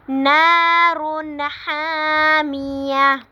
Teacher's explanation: نارن پہ نا پہ الف مدہ ہو رہا ہے، نارن، تنوین کے بعد حروف ہلکی میں سے ہا آ رہا ہے، حروف اظہار میں سے، تو ہم نے تنوین کو ظاہر کر کے پڑھنا ہے.